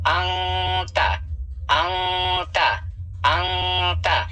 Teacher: नून साकिन की आवाज को नाक में छुपा कर पढ़ना है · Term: इख्फा